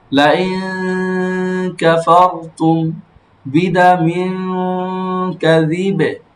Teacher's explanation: কাফের মাখরাজ কোথায়? জিহ্বার গোড়া থেকে একটু আগে বাড়িয়ে, তাই না? তারপর উপরে তালুর সঙ্গে লাগে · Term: ইকফা গুন্না